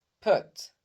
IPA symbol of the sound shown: ʊ